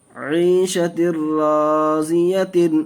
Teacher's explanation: دیکھیے ناظرین ادغام ارمنون کا قاعدہ دو زیر تنوین کے بعد ادغام ارمنون کے 6 حرفوں میں سے را آیا، اس لیے بلا گناہ کے جلد پڑھیں گے